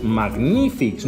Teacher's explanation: la síl·laba tònica està així, magní, en la ni, i acaba en S, amb C, CS, no vocal més S, sinó una consonant i una S.